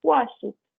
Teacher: Vai ser som de T quando a consoante que termina o verbo for muda.